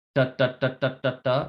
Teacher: For this T with the dot on top, there's no puff of air.